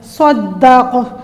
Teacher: اس کو وقف کرتے وقت ہم قلقلہ کریں گے قاف کے اوپر، صدق، اس کو ہلا کے پڑھیں گے۔